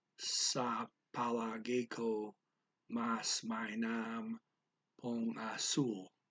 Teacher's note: Speaker blends the po and the ang into pong